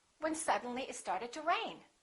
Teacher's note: rain would be your focus word